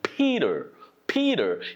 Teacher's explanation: a P is unvoiced plosive stop and lots of air is involved to do it